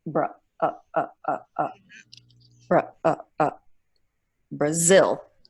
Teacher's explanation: You have to make it lazy, and the schwa brings it down in pitch. It's lower, it's shorter, it's less clear, so you get bra, bra, Brazil, and zil is the stress, Brazil.